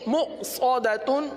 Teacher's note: صاد کو پر پڑھیں گے